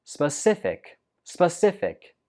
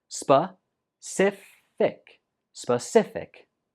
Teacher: The stress goes on the 2nd syllable.